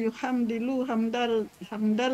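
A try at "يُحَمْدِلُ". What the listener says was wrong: Bukan hamda, tapi hamdil. Ambil, bukan ambar, ambil. Kalau mudore tahamdala kan ya tahamdalu, danya fathah. kalau mudorenya kasroh, yuhamdilu di, maka amarnya juga kasroh.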